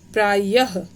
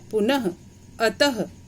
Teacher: यदि अनुस्वार की तरह विसर्ग भी स्वर के बाद आता है तो इसका उच्चारण हल्के ह की तरह होता है। जैसे य के बाद हमने विसर्ग लगाया तो उच्चारण हल्के ह की तरह।